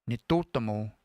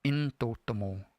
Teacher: sometimes when you have this NIT at the beginning of a word, I won't hear nitotamo, I'll hear intotamo.